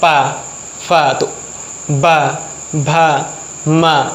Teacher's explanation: दो ओठ जो हैं ऊपर और नीचे के टच करते हैं तो साउंड निकलती है।